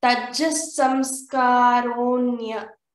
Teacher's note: when visarga comes before the sakara, we have to say tat jas samskaraha.